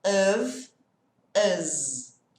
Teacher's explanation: O F tem som de V de vaca e o S aqui vai ter som de Z de zebra.